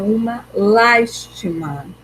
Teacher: Então, a sílaba mais forte é o las, né? Uma última, o ti, penúltima e o las, antepenúltima.